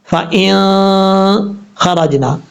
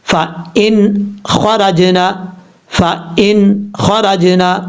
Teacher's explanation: یعنی نون ساکن کو ظاہر کر کے پڑھیں گے، چھپائیں گے نہیں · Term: اظہار